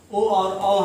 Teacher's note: कंठ और ओष्ठ से बोले जाने वाले ओ और औ हैं